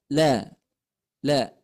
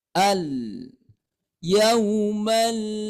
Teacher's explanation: lam sukun itu makhrajnya berada di ujung lidah kita dengan tepinya ya tepi luar ujung lidah kita menempel ke belakang pangkal gigi atas la la jadi bukan hanya ujungnya saja ya Tapi semua ujung